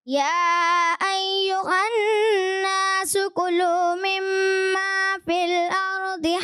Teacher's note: کلو میں جو ہے کاف مجھے تھوڑا سا پر ہوتا محسوس ہوا